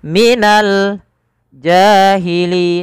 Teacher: Qariah ada alif lam yang bertemu dengan huruf Jim yang mana Jim termasuk daripada huruf qamariah maka kita perjelas huruf lamnya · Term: alif lam Qariah